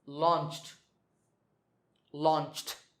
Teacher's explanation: the last sound is ch, which is voiceless, so launched, launched.